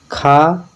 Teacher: खा जो है महाप्राण और क्या है कंठ है